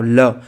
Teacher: निकल जाती है ठीक है तो इसलिए हम इसको क्या बोला पार्श्विक यानी अगल-बगल को टच करते हुए बाहर निकल जाना